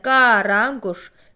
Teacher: Gördüyümüz kimi bütün saitlər qalındır. Qaranquş sözündə bütün saitlər qalın olduğu üçün ahəng qanuna tabedir. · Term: qalın saitlər